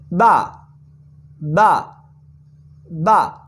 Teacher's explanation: با ہونٹوں کے تر حصے سے ادا ہوتی ہے، با با با، ہونٹوں کے تر حصے اوپر اور نیچے والے جب دونوں ہونٹ ملتے ہیں تو با ادا ہوتی ہے۔